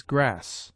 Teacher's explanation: The short A approaches to the A open